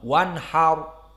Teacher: Dan ra di sini disukunkan karena di akhir, maka bagaimana hukumnya? Hukumnya ra as-sakinah kembali kepada yang sebelumnya. Sebelumnya fathah, berarti dia mufakhamah. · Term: ra mufakhamah